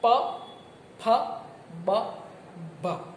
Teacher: અને પાંચમો પ્રકાર છે ઓષ્ઠ વ્યંજન. નીચલો હોઠ ઉપલા હોઠને સ્પર્શે ત્યારે જે ધ્વનિ નિષ્પન્ન થાય એને ઓષ્ઠ વ્યંજન કહેવાય.